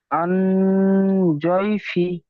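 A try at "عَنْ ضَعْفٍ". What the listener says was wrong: জদ, জাইফি। জদ হয়ে যাচ্ছে, একটু আর একটু চেপে দদের মতন উচ্চারণ করতে হবে। আন জাইফি।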